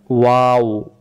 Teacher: ওয়াও অক্ষর বলতে কোনো জিহ্বা লাগে না, হ্যাঁ, দুই ঠোঁট থেকে উচ্চারণ হয়, গলা থেকেও না।